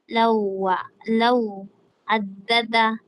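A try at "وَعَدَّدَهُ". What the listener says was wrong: Hindi ito law, hindi ito law addada. Lawa. Parang ganyan oh. Lam, law at saka wa. Law at saka wa, lawa. Bago mo idagdag ang addada. Lawa, idagdag mo itong addada. Bali, lawa addada.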